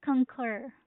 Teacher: So the stress is on the second syllable, which is concur.